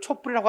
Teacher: 단지 뒷소리를 된소리로 만들어주는 형식상 시옷이야